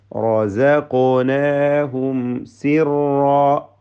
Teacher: സാക്കിന മീമിനെ ഇൽഹാർ ഷഫവി നൽകി മണിക്കാതെ വെളിവാക്കുക